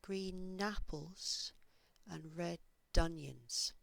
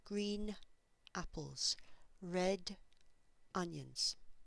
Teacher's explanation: these words here sound like green napples and red donions so those consonants they move across so they sound as though they belong to the second word